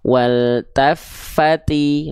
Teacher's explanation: Ya, nah sekarang teman-teman tinggal praktekkan wal tafati. Nah, jadi ketika melafalkan ta, pastikan ada percikan-percikan nafasnya